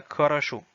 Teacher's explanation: Donc encore une fois, on note que ces deux O se prononcent quasiment comme des A parce que l'accent est porté sur la dernière partie.